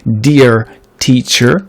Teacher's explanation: on a quand même un peu plus un accent américain, avec un R qui résonne un peu plus